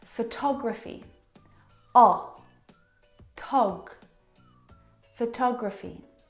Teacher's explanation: the second syllable is the stressed syllable in this word